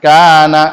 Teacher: কা একালিফ টেনে পড়বো, অনেকে কা এই টানতে ভুলে যান